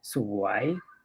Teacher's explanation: And then it's a rising tone.